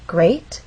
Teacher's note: That means this is the point where our voice will go up. Great has one syllable, so we only have one syllable to make our voice glide up. Great. And we're using rising intonation because this question requires a yes or no answer.